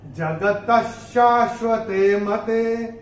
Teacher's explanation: दूसरे चरण में त के बाद विसर्ग के पश्चात जो अक्षर आ रहा है वो है श, और विसर्ग के बाद अगर श, श या स आता है तो विसर्ग का उच्चारण आधा श, श या स होता है। चूंकि यहाँ पे श आ रहा है तो ये विसर्ग का उच्चारण होगा श आधा